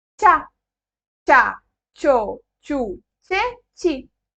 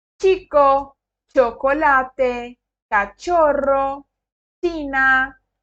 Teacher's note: Sempre tem esse som travadinho, como se fosse um TCH. Como na palavra tchau, é como se fosse esse som.